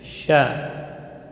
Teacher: Sya, huruf yang keluar dari tengah lidah. Sya, huruf hamas dan rakhawah, mengalir udara dan suara.